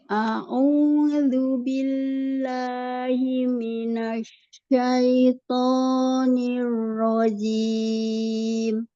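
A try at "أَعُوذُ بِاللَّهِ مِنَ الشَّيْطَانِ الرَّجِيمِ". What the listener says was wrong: Tinggal huruf shin-nya. Tampakkan lagi tafasyinya. Asyaitoni. Tengah lidah ya. Shin dari tengah lidah.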